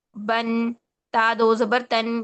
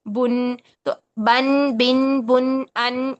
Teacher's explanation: تنوین کو جب ہم ادا کرتے ہیں تو اس کے آخر میں نون ساکن ہی کی آواز آتی ہے